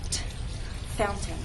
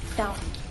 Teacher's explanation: is one of those words in English that has two pronunciations the standard pronunciation is fountain with a true t